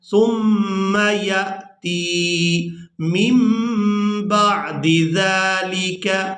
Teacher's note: یہاں پر بھی ہم نے نون کو میم کے ساتھ بدل کر ادا کرنا ہے